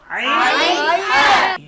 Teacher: আলহামদু, অনেকে বলে আলহামদু, একটি হলো হা আর একটি হলো হা। কণ্ঠনালীর মধ্যখান থেকে, হলকের মধ্যখান থেকে 2টি হরফ উচ্চারিত হয়, আইন হা